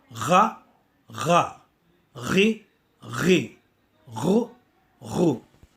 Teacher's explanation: To pronounce Ghain, we need to add the gargling sound, which is with the G sound.